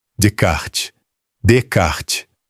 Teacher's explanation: O S do meio é mudo, a consoante final soa, o E final não.